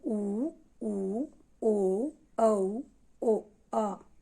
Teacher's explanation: इन वर्णों को जब हम उच्चारण करते हैं तो हमारे होठ बिल्कुल क्या हो जाते हैं, गोल हो जाते हैं, इसलिए इनको क्या कहते हैं, वृतमुखी कहते हैं।